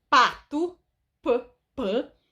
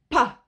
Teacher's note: Se eu for produzir o primeiro som de pato, p, quando o ar chegar na parte dos lábios, ele vai encontrar um fechamento total. E vai fazer uma forcinha.